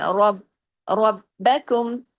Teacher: را کو ہیوی کیجئے زبر کی وجہ سے، سختی سے با کے ساتھ جوڑیے، با کی آواز ڈبل آنی چاہیے لیکن باریکی سے، تمام اگلے حروف باریک ہیں.